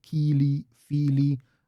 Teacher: The stress is a bit more on the first syllable in Neo-Khuzdul. · You have Kili, Fili, because it's an extended I there, mimicking the original Old Norse yet again